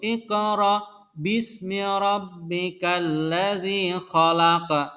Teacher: Ingat, qaf mati sama qaf yang terakhir ini ya, qaf wakof ya namanya, pas di wakof nih qafnya ini ya. Jadi harus dibaca mantul. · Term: bacaan qalqalah